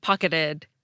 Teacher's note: you can also get an alveolar flap between two unstressed syllables, as in the T in “pocketed.” You can even get an alveolar flap at the beginning of a stressed syllable, as long as the one before it is unstressed.